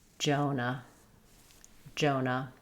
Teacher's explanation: In Jonah, we have first syllable stress. Letter O says O. Letter A says U.